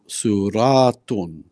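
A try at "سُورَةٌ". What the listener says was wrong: Don't pull the ra too much. Suratun.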